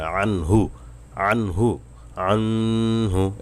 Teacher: হা হলো ইজহারের 6টি হরফের একটু অক্ষরে যে হা। তো হা আসার কারণে এখানে গুন্না ছাড়া স্পষ্ট করে পড়তে হবে। আনহু, আনহু, আনহু, এভাবে করে গুন্না করা যাবে না।